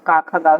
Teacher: क ख ग घ ये जो है वो हमारे कंठ से उच्चारण होते हैं